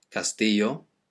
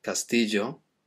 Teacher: the double L in Spanish, it's sometimes pronounced as a y, castillo, sometimes as a j, castillo. In Argentina they pronounce it as castillo, but it's never a l sound, it's never like the single L, so it's never going to be castillo, so careful with your pronunciation of that one.